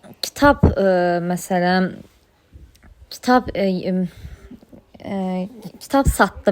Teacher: Kitab satdı. Baxın, burada kitab sözündən sonra s kar samit gəldiyi üçün b kar qarşılığı olan p kimi tələffüz olacaq